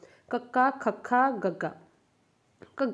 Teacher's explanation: ਤਾਲੂ ਨੂੰ ਟੱਚ ਕਰਦਾ ਆਪਣਾ ਜੀਭ ਦਾ ਪਿਛਲਾ ਪਾਸਾ, ਤਾਂ ਹਵਾ ਰੁਕਦੀ ਆ। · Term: ਕੰਠੀ